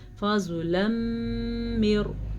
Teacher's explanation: تنوین کے بعد یمون میں سے میم ہے تو ہم ان دونوں کو آپس میں ملا دیں گے، غننے کے ساتھ ملائیں گے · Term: ادغام بالغنہ